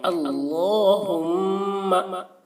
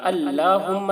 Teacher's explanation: اللہم، اللہ کا لام پر ہوگا، ہم میم میں تشدید ہے تو غنہ کریں گے. اللہم ایسے بولنا، اللہم نہیں، اللہم.